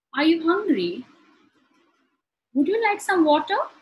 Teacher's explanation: in all three sentences, my intonation rises towards the end. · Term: rising intonation